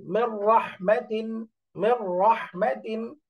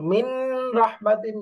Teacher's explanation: নুনটা বাদ করে ডাইরেক্ট মিম রা কে ধরে ফেলবে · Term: গুন্না ছাড়া ইদগাম